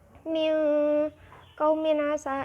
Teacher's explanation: idhar halqi sebab tanwin bertemu ain dibacanya jelas